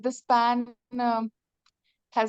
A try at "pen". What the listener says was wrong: Pen, not pan, pen. Pen, pen. आपने तो pan बोलते हैं.